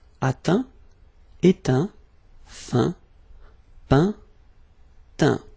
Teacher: final T not pronounced